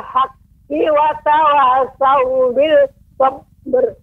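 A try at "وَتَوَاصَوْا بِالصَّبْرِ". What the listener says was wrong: Saat itu alif lam syamsiyah, maka pengucapannya Ibu langsung jadi tasydid bis sabr, tidak bil sabr.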